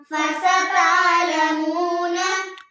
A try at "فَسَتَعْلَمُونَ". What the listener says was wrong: فاسا کو ہم نے نہیں کھینچنا، تا کی بیچ میں آواز آ رہی ہے. فستعلمون. تا میں کیا ہے؟ تا الف زبر، تا کو ہم الف کے ساتھ ملا رہے ہیں.